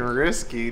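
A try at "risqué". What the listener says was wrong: Okay, but you just did my biggest pet peeve. You know it's not pronounced risky. It's risque.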